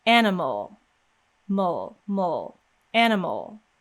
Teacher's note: So you can see that as soon as my lips start coming out of the way from the M, as soon as we release that M sound, we're immediately making an L with no vowel sound in between